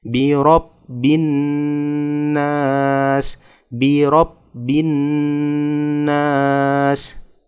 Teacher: ketika bertemu dengan nun tasydid termasuk bacaan dengung atau gunnah, maka harus ditahan dan didengungkan